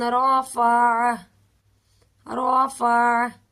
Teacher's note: آخر میں عین کی آواز آئے گی، عین ساکن ہو جائے گا۔